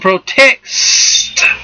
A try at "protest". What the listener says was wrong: Protest. That's not what you said. You put a C in there, but that's all right. Go ahead.